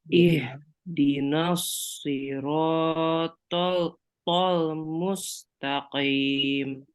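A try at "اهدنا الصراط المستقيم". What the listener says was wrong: Ininya yang hanya ya, ini hanya H besar. Jadi jangan ada desis gitu.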